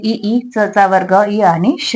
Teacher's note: तालव्य म्हणजे टाळू पासून उच्चार होणारे